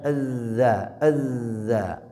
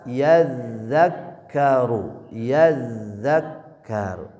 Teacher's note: Ya, kalau dza ujung lidahnya ke ujung gigi seri atas. Ya, kalau nempel ujung lidahnya ke ujung gigi seri atas ini tempat huruf dza